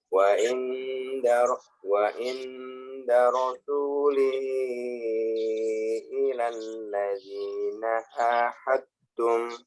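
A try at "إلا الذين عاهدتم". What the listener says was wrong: Nah, ilahnya masih tasdid. Ini ada tasdidnya Pak. Illal. Nah, bukan ila. Beda ila dengan illa.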